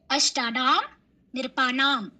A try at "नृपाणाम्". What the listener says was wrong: केवलं ध्यान ददातु। नृपाणाम् नृपाणाम्, अत्र नकार उच्चारणं न भविष्यति। नृपाणाम् रामाणाम् एवं।